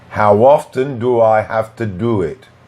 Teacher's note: Here we add three small w, and we also reduce to to t.